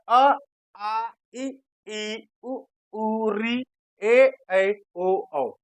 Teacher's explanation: ओ औ इनी 11 स्वरों का जब मैंने उच्चारण किया तो इनके उच्चारण में हवा केवल हमारे मुख से निकली है नाक से नहीं निकली है